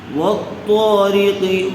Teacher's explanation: والطارق، تو کو پر کیجیے، تو کے اوپر زبر ہے، زبر کے بعد الف آیا ہوا ہے، اس لیے حرف مدہ ہوگا، الف مدہ ہوگا، تو کو تھوڑا کھینچ کر پڑھیں گے۔